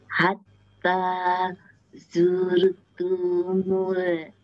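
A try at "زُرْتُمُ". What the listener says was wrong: Pendek, tumul.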